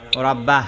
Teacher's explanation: রব্বার রয়ের মধ্যে রটা মোটা হইয়া যাবে